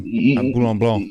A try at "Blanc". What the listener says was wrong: You don't count the C. The C is silent, bro.